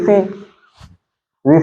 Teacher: तो उच्चारण कैसा हो रहा है रि समान, और र क्या है व्यंजन है